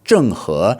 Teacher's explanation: fourth tone and then second tone in Mandarin